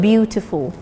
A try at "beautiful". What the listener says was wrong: No, beautiful. As I said, the T is sounded beautiful.